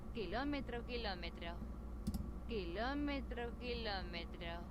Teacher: there is an accent on the O. That means we keep the stress on the O syllable, on the O vowel.